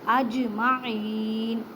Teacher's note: جیم ساکن ہے اس وجہ سے یہاں پہ کلکلا کریں، کلکلا کا مطلب ہے ہلا کر پڑھنا۔ اب نون کو ساکن کر دیں کیونکہ آگے وقت کی علامت ہے۔